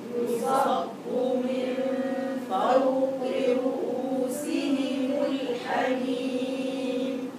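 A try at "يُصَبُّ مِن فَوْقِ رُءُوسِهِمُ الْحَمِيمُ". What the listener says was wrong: الواو في فو مرققة نعم يصب من فوق فو وليس فو فوق رؤوسهم الحميم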